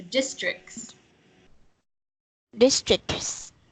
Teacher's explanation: So the T is barely there, but you're still pronouncing the C. So it's making a K sound and then an S immediately after.